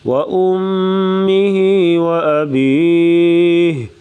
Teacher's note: امی پہ غنہ کریں گے